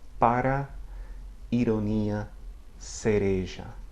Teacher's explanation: So it's that tongue flap against the ridge behind the top front teeth. Nothing like an English R, so be careful.